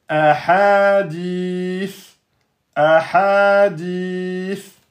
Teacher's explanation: Donc là, 2 temps, ici 2 temps, et donc à l'arrêt devient ahadith, ahadith. Le sa devient soukoun à l'arrêt. Il est précédé par une voyelle longue, donc une prolongation. Donc en plus de la prolongation de temps qui est là d'origine, on peut, si on veut, rajouter 4 ou bien faire un 6 temps.